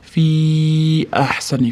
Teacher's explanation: fi orqasida hamza kelayotgani uchun ko'proq cho'ziladi. Mad munfasil kelyapti.